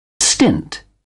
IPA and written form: stɪnt (stint)